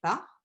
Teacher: Donc, McNeilage et Davis ont proposé que les associations préférentielles, plus simples en fait, seraient les associations du style consonne labiale, voyelle centrale